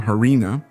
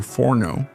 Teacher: the disappearance of the Latin F at the beginning of a word, that is, the suppression of this sound, as in the case of farina, which became harina, or forno, which became horno, among many other cases.